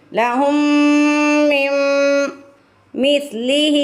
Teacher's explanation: ہا کے نیچے کھڑی زیر ہے، اس کو کھینچ کے ادا کریں گے